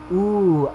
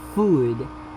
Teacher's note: high back rounded long vowel